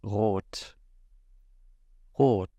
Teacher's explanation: And the way it's pronounced is kind of similar to the trilled R in the front of your mouth using your tongue. However, it is uvular, so it is pronounced using the back of your throat, essentially. Like you're gargling, kind of.